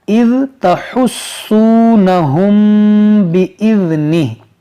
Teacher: मीम साकिन के बाद बा है, यहाँ पर इख़फ़ाए शफ़वी होगा यानी गुन्ना होगा